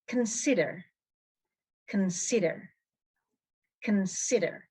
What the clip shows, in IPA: kənˈsɪdər